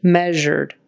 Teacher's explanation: it's a voiced sh